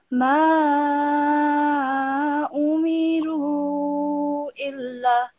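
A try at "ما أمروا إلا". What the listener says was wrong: Well done, brilliant.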